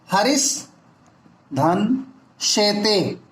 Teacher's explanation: दंती सा is converted in तलबी सा